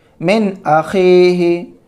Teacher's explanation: نون ساکن کے بعد حمزہ آ رہا ہے تو نون ساکن کو ظاہر کر کے بلا غنہ کے جلد پڑھیں گے